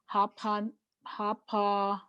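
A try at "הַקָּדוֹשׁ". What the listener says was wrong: Nope, that's a K sound.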